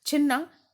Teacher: छी यद्यपि ह्रस्व है, लेकिन आगे व्यंजन वर्ण है नकार, इसके कारण यह गुरु होगा। और ना दीर्घ वर्ण है, गुरु होगा।